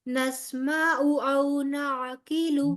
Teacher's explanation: نہ عین لمبا ہوگا نہ لام لمبا ہوگا